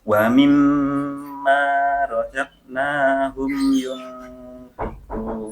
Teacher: coba ditekan mimnya, kemudian ma-nya dipanjangkan